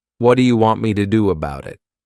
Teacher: we can take words like what do you and combine the sounds together to produce one new word. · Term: connected speech